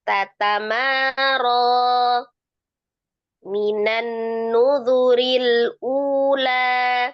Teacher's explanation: coba di ujung-ujungnya itu biasakan tidak ada hamzah sukun ya